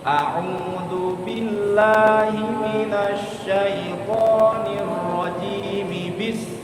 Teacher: Mi-nya langsung disambung ke bis. Mi bis gitu. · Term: disambung langsung